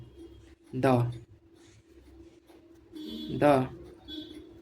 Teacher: ट वर्ग के व्यंजन को हम मूर्धा या मुधन्य से उच्चारण करते हैं।